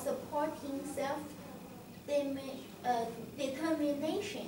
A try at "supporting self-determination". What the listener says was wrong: Yeah.